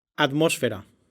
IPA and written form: að̞ˈmos.fe.ɾa (atmósfera)